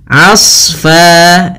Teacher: hati-hati jangan menebalkan ainnya tapi di sini yang ditebalkan adalah huruf sadnya · Asfa, di sini huruf a ketemu dengan huruf shad yang tebal. Hati-hati jangan menebalkan ainnya, tapi di sini ditebalkan adalah huruf shadnya. Hati-hati juga jangan sampai terpantulkan huruf shadnya.